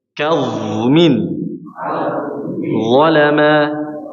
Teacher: huruf dha ini memang sifatnya mengalir suaranya, jadi harus dialirkan.